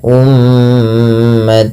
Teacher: tanwinnya dimasukkan ke huruf mim tidak lagi terdengar bunyi umatan muslimah tapi diganti dengan huruf mim